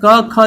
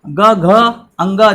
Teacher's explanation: क ख जो है अघोष होगा, बाकी ग घ अंग जो होता है वो हमारे क्या होते हैं? सघोष होते हैं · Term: अघोष और सघोष